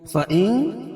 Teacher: فَإِن اخفا حقیقی کیونکہ نون ساکن کے بعد حروف اخفا کے 15 حرفوں میں سے تا ہے، تو یہاں ناک میں آواز کو چھپا کر پڑھیں گے